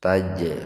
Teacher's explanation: Taja qalqalah sugro. Huruf jim yang sukun ya, yang mati di tengah-tengah kata, jadi dipantulkan secara ringan